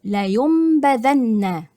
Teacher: هيتحصل اقلاب للنون تبقى ميم، لا ينبذن، هنا النون تحولت الى ميم وعملت بعد كده الباء، لا ينبذن، ده كده الاقلاب.